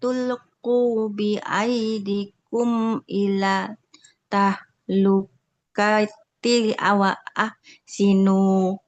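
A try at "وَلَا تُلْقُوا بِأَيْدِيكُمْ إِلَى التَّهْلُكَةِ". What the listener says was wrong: Oke, wala tulqu bi aidikum ilat tahlukah. Huruf ta-nya ada tasydidnya.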